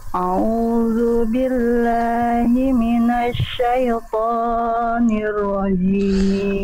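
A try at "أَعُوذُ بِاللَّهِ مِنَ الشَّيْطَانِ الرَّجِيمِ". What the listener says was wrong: Oke bunda, perjelas mana hamzah mana ain. A'udzu billah. Hamzah pangkat tenggorokan, ain tengah tenggorokan. A'udzu billahi minasyaitonir rajim.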